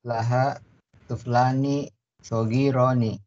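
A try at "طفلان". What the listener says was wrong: Tiflani, laisa tuf. Tiflun, tiflani.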